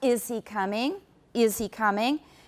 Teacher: the first sound is not it's not a vowel it is a glottal stop